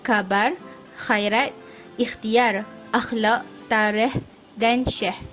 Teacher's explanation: nama convenient geseran gusi lelangit lembut tak bersuara cara penghasilannya ialah belakang lidah dinaikkan sehingga menyentuh lelangit lembut lelangit lembut dinaikkan udara keluar ke rongga mulut melalui ruang yang sempit pada lelangit lembut pita suara tidak bergetar